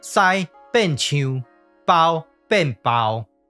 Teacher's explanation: 第1调的包变调了后，就要变第7调，相对应的就是唱的声调